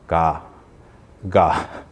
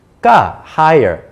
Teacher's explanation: It has to be ga, higher. Even somebody with a very deep voice will actually pronounce ga in a relatively high pitch.